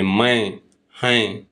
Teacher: जिन स्वरों के उच्चारण में हवा मुंह के साथ साथ नाक से भी निकलती है उन्हें अनुनासिक स्वर कहते हैं